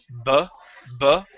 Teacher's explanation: when we pronounce that b, you feel a vibration here in your vocal cords. That means it's voiced.